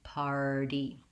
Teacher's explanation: the stress is on the first syllable so i have time and length to say my par